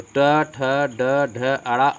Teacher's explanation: ये मूर्धा से निकलता है, मूर्धन्य ध्वनि होता है